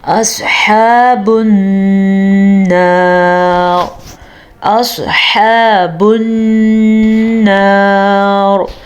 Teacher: سواد کو پر پڑھیں گے کیونکہ سواد حروف مستعلیہ میں سے ہے. یاد رکھیں 7 ایسے حروف ہیں جو ہمیشہ ہی پر پڑھے جاتے ہیں جن میں سواد بھی شامل ہے.